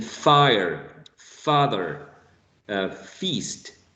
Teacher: produce the sound as in fire father feast the initial sound you're going to be using the upper teeth and the bottom lips